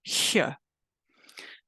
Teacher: Veer fricative sounds like this this sound doesn't exist in English when the letter H comes after a single or double I it is a so-called voiceless palatal fricative